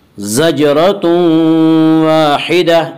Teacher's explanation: زجرۃ واحدہ، الف مدہ، الف ہمیشہ مدہ ہوتا ہے، الف سے پہلے زبر ہوتا ہے، الف مدہ کو ایک الف کے برابر کھینچ کر پڑھیں گے۔ زجرۃ واحدہ، آگے آیت ہے، وقف کریں گے۔